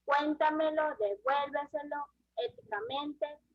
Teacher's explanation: llevan la intensidad de la voz en la sílaba anterior a la antepenúltima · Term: Palabras sobre trújulas